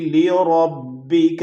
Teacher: را موٹی ہوگی، را پہ زبر ہے